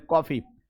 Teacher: आ और ओ के बीच की जो ध्वनि है उसको ओ बोलते हैं कॉफी ना तो हम कॉफी कहेंगे ना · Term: आधे ओ